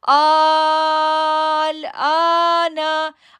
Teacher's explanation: آ کو 2 سیکنڈ کے لیے کھینچا کیونکہ اس کے اوپر کھڑی زبر آ رہی ہے